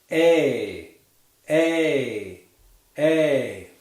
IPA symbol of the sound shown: eɪ